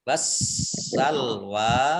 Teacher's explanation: alif lamnya alif lam syamsiyah tidak dibaca, langsung masuk ke huruf berikutnya yaitu sin ditandai dengan ada tasdid.